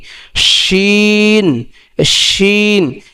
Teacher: জিহ্বার মধ্যকান থেকে তার বরাবর উপরে একদম তালুর সঙ্গে লাগাইতে হবে। যেমন কি শিন, শিন, এই শিনটা বলার সময় একটু শাসা শব্দ করতে হবে, উচ্চারণ করার আগেই একটু শাসা শব্দ করতে হবে।